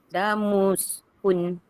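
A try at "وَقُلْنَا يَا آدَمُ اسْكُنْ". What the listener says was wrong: Okey, satu lagi na ni jangan terlebih ni. Berapa harakat je na ni? Berapa? Jangan lebih. Wa qul tempo dia tu macam kita tekan sekali je. Wa qulna ya Adamu. Kita tekan sekali je.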